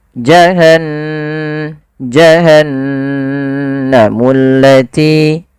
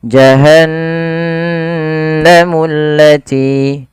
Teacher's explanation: Dia menandakan di situ bacaannya adalah bacaan ghunah. ghunah yaitu membunyikan suara hingga masuk ke rongga hidung kita. Maka suara nunnya dimasukkan ke rongga hidung.